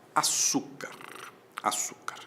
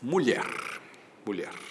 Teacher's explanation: açúcar é paroxítona, mulher é oxítona, certo? Mulher termina em R, açúcar termina em R.